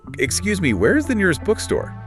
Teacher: Notice how the voice goes up a bit on bookstore signaling a question. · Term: upward tilt